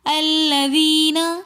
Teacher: الذین میں یا مدہ آ رہی ہے تو اس لیے ہم نے یا مدہ کو تھوڑا سا کھینچ کر پڑھا